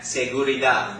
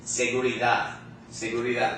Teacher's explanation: D does not sound like a D in English. It sounds like the TH sound in the word the, okay? Not the hard TH like thank you, no.